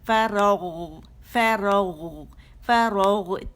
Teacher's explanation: ہمارا جو زبان کی جڑ ہے یہ اٹھے گی اور نرم تالو سے لگے گی, تو غو کی موٹائی جو ہے وہ ادا ہوگی